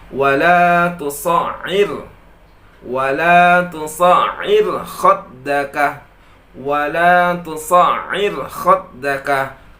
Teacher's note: maka ra tersebut dibaca tipis, bukan tebal.